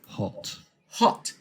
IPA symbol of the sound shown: ɒ